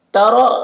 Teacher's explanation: را کو پر پڑھیں گے، را کے اوپر زبر ہے۔